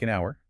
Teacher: The H is completely silent, so the word truly begins with the vowel sound. You're not saying hour because that would be like trying to jump over a linguistic hurdle, phonetically speaking. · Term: silent H